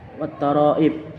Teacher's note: mat wajib mutasil karena ada mat tabi'i bertemu dengan huruf ain dalam satu kata atau kalimat. Cara membacanya panjang 5 harokat. Wattoroib qalqalah kubra karena ada huruf qa yang berada di akhir kalimat.